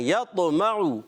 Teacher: میم کی حرکت کو بھی نہیں کھینچنی, عین کی حرکت کو بھی نہیں کھینچنی, اور عین پر پیش ہے, ہونٹ گول ہو جائیں گے